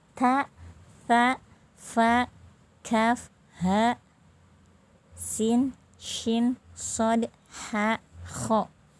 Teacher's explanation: keluarnya huruf disertai keluarnya angin, ya. Jadi seperti ada angin yang keluar, ya. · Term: al-hams